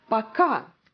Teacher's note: so the stress goes to the second syllable